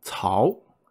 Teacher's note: the o has the second tone which is ascending